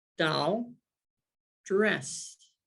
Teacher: if i say doll and i say dress my mouth had a very different contour it was much more pursed my lips were pursed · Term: co-articulation